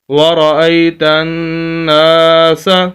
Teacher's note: اور تیسری بات یہاں پر یہ ہے کہ نون مشدد ہے اور یہاں پر غنہ ہوگا۔ غنہ کہتے ہیں ناک میں آواز لے جانے کو، نون مشدد میم مشدد جہاں پر بھی آ جائے تو وہاں پر غنہ ہوتا ہے، تو نون مشدد پر بھی غنہ ہوگا۔